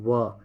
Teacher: वा एक ऐसा वर्ण है हमारे हिंदी में जो दंत और ओष्ठ दोनों के सहयोग से बोला जाता है। बोल के देखिए वा।